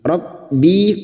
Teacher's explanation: Rabbi kasrah diikuti ya sukun, 2 harokat kita panjangkan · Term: mat tabi'i